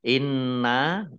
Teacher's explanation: Inna nun tasdid gunnah dibaca mendengung, ditahan 2 harokat.